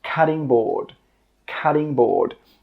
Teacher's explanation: I know it's spelt with a T, but when we pronounce it, we actually use a D sound